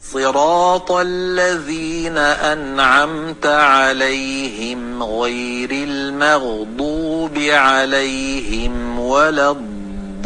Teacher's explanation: dod undoshini arab qorilari d ga moyilroq qilib talaffuz qilishadi, ya'ni do, ad singari. Ammo ba'zi Mavron Nahr qorilari zo singari talaffuz qilishadi.